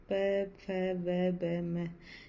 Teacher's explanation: ये होठ से बोले जाते हैं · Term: ओष्ठ व्यंजन